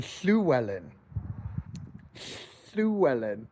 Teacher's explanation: It looks like a double L in the Latin script. It's an aspirated L in the Cumbric language. · To say the aspirated L sound, place your tongue as if you're trying to say lion and simply blow air by the sides, and it becomes a noise.